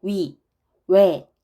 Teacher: 이런 단모음이 지금도 노인 계층에서는 단모음으로 발음을 하는데 좀 젊은 사람들은 이걸 자꾸 이중모음으로 발음을 하는 상황이에요.